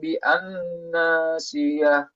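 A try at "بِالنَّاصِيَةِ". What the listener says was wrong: Bin nasiyah. Lam dan lamnya tidak dibaca dan tidak ada hamzah di sini fathah bi an-nasiyah bin nasiyah.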